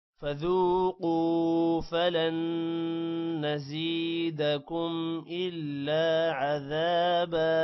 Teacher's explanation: فَذُوقُوا ذال کے بعد واو ہے لمبا کریں گے، قو کو بھی لمبا کریں گے، فلن نون پر غنہ ہوگا